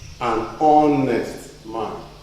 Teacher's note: The H is silent. You swallow that. And you actually begin your pronunciation from the next letter, which is O.